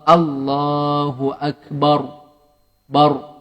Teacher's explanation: Dia macam muncung sikit. Sebab dia tafkhim, dia tebal sikit ra tu.